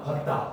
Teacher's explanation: 그래서 오와 아가 합쳐지면 와